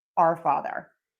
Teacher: there is a variation in American English where hour, o u r, is sometimes pronounced like are.